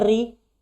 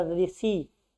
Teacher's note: जब री को हम बोलते हैं तो जीभ का अग्र जो भाग है हमारा, वो ऊपर जो गड्ढा होता है उसमें स्पर्श करता है।